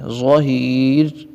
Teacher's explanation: وَمَا لَهُ مِنْهُمْ مِنْ ظَهِيرٍ، اور ظا کو پر کر کے پڑھتے ہیں. را حالت وقف میں یہاں پر ساکن ہو جائے گی اور باریک پڑھی جائے گی، کیونکہ را ساکن اور اس سے پہلے والا ساکن ہے، اور تیسرے حرف کے نیچے بھی زیر ہے.